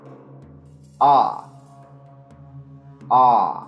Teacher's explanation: it is the open back unrounded vowel and it is produced back at the tongue positioned far from